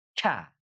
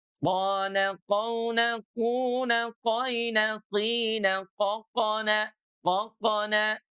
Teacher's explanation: Kalau huruf kof dia clean ya, tebal tapi tidak ada nafas yang mengalir.